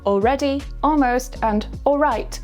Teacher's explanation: It's called L illision, or more simply, just dropping the L. It's when the L sound disappears after a vowel, specifically the O vowel sound to make your speech sound much faster.